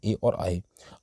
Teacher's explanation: कंठ और तालु दोनों से बोले जाते हैं ए और आय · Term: कंठतालव्य